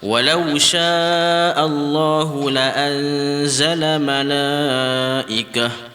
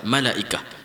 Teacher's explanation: Bila mana jika dia berbaris dua di atas, jika kita waqaf, dia akan bertukar menjadi bunyi ha yang ha bulat tu.